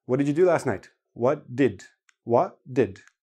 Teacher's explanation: if you listen to native speakers hardly anybody actually pronounces the T